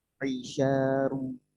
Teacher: Ro-nya tebal, ru. Tapi huruf syidnya jangan tebal ya. Jangan tafkhim. Huruf syid tidak monyong, tidak sya, tapi sya.